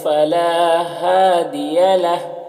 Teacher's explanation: ہا میں الٹا پیش ہے، وقف کی صورت میں یہ سکون سے بدل جائے گا